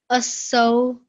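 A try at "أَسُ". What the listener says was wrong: So not aso, so that would make it a lean letter. This is just asu.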